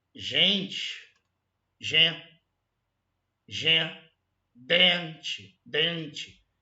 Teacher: São duas letras em que o N só tem o objetivo de nasalizar o E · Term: dígrafo nasal